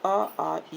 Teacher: इन स्वरों के उच्चारण में हवा केवल मुंह से निकलती है, नाक से नहीं निकलती। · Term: मौखिक स्वर